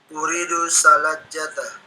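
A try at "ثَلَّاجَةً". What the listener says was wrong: Salajatan. Lamnya tasdid ya, itu lamnya tasdid. Salajatan gitu ya.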